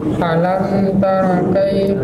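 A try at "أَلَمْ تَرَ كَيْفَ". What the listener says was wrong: Bukan tara, taro. Ya, ro itu bukan ra ya, ro la ba'sa bihi.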